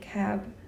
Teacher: the final consonants or at least without anything like a vowel you could even say cap and not open your lips for a considerable period of time